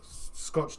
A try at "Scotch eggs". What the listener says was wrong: Scotch eggs. Scotch. You're saying scotched. Scotch.